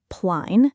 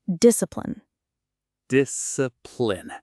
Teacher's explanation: that last syllable is really short, almost swallowed.